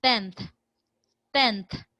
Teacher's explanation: the nasal is actually articulated at the inter Dental meaning let your tongue out